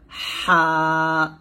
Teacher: এই যে হরফটা হা এটা আপনাকে কন্ঠের মাঝখান থেকে চাপ দিয়ে এবং চিকন করে বলতে হবে